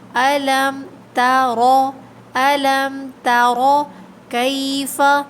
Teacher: الم تر میں ہمیں خیال رکھنا ہے کہ تا ہمارا موٹا نہ ہو، تا کو ادا کرنے کے بعد را کو موٹا پڑھیں گے